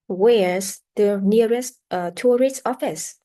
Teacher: the intonation often starts high and jumps down on the stressed syllable on the most important word and then rise at the end of a question. And this intonation can be used for both yes, no, and W questions. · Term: polite questions